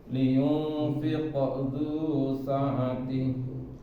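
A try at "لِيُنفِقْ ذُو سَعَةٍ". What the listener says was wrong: Nah, itu masih ada remnya. Ketahuan remnya adalah dia biasa terpisah. Liyunfiqo. Nah, itu remnya. Fiqo. Lepas ya, fiqo.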